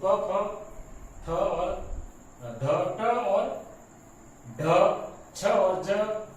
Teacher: यानी कि दूसरा और चौथा व्यंजन ये सभी महाप्राण स्पर्श ध्वनियों में आ जाते हैं।